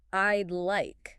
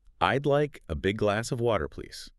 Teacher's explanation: I'd like shouldn't sound like 2 separate words. It should sound more like one smooth sound. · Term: blending and reduction